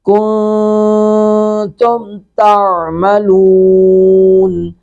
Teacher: नून साकिन के बाद ता है, यहाँ पे इख्फा करेंगे